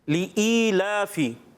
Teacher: لی جو ہے یا مدہ بنتا ہے اس کو ایک الف کھینچیں گے